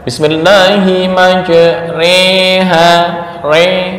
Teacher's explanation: condongnya harakat fathah ke kasrah jadi dibaca fathah juga enggak kasrah juga enggak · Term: imalah